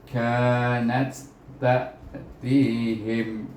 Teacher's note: Kita baca nat, iaitu pada ta yang kedua. Ta yang pertama tidak berbunyi.